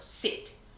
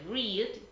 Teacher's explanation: cuando aparece la I pura, es un sonido corto, sit. Diferente de read, que es una I más larga.